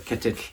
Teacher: pronounced by closing the tongue around the inside of the gums and then releasing it on one side. With that little puff of air sound. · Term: double L sound